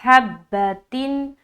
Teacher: ये ह को बिल्कुल सीने तरफ से निकालेंगे · یہ ہا کو بالکل سینے طرف سے نکالیں گے